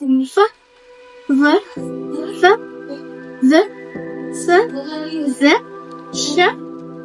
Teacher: the air flows continuously but not complete closure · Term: continuant